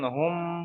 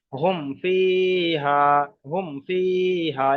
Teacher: ফা এসছে। তাই এখানে এই মিম সাকিনটাকে বিনা গুন্নায় জাহির করে পড়তে হবে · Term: ইজহারে সাফাবির কায়দা